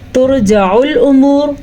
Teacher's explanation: ترجع الامور، را کو پھر سے پر پڑھنا ہے کیونکہ را ساکن سے پیچھے پیش ہے۔ ٹھیک ہے، را ساکن سے پہلے پیش ہونے کی وجہ سے را کو ہم موٹا پڑھیں گے